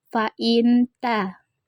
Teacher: ikhfa karena huruf nun sukun bertemu huruf ta. Cara membacanya samar dengan dengung